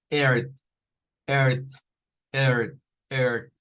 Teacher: Es el sonido de una E abierta con una R en el inglés